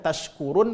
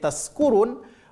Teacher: Kalau shin tempat keluar hurufnya adalah tengah lidah, sedangkan huruf sin tempat keluar hurufnya adalah ujung lidah. Maka ketika orang salah menyebutkan tashkurun menjadi taskurun, mereka itu karena enggak faham tempat keluar huruf itu.